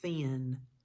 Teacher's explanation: No buzz, no buzzing. It's voiceless. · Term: voiceless TH